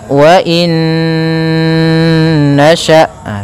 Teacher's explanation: dengan huruf nun maka hukum tajwidnya yaitu idgham bhunah cara membacanya masukkan Nun yang pertama kepada Nun kedua kemudian ditahan gunahnya karena idgham itu memasukkan Bil ghunna disertai dengan ghunah maka wainasya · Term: idgham bi gunnah